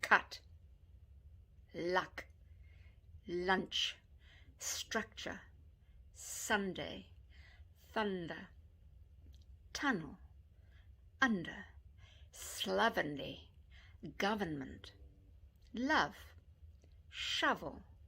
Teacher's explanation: your lips are relaxed your tongue is mostly relaxed but for a slight pull down at the back of the throat and you drop your jaw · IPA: /ʌ/